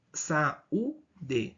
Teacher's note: nós temos aqui ó a penúltima sílaba mais forte